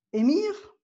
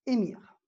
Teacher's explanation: En ce qui concerne émir, donc émir en arabe, la voyelle A de l'arabe est devenue E. Donc, émir.